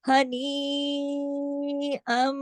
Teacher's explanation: वो खींचेगा, इदगाम ताम हो रहा है, इदगाम हो रहा है, इदगाम ताम बिल गुन्ना हो रहा है, बड़े गुन्ने के साथ, भरपूर गुन्ने के साथ